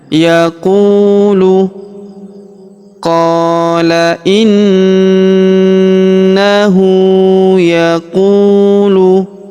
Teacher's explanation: Huruf qu kita panjangkan dua harakat karena wau sukun di depannya.